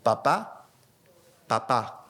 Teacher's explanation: voy a decir papá tapándome la nariz y va a ser exactamente lo mismo. Papá, papá, no use la nariz.